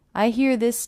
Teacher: I hear this T as a D because again it's a T coming between two vowel sounds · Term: flap T